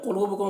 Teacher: قاف کو پر پڑھنا ہے، لو میں واو مدہ ہے. بکم یہاں پر میم ساکن کے بعد با ہے تو اخفاء شفوی ہوگا، اور بہ یہاں پر وقف کریں گے تو یہ بہ ہوگا، کھڑا زیر جو ہے وہ جزم سے بدل جائے گا.